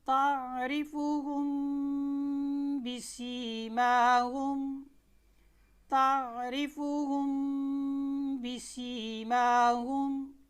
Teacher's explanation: تو جب بھی پورے قرآن پاک کے اندر یہ آپ قاعدہ ایک یاد کر لیں کہ میم ساکن کے بعد با آ جائے تو میم کو اس کے مخرج میں چھپا کر پڑھتے ہیں